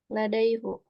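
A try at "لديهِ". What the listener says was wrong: nah, bukan ladaihu ya, tapi ladaihi ya apa? Ladaihi.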